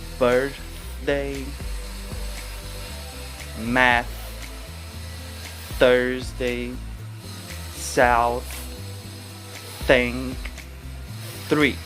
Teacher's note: TH unvoiced, meaning only air passes through the mouth